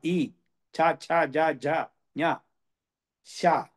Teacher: ఇవి తాలు నుంచి వస్తుంది